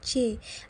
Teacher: dihasilkan oleh bagian tengah lidah menyentuh langit-langit keras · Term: palatal